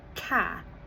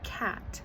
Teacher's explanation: Final consonant deletion, which is dropping the last sound of a word, like saying ca instead of cat.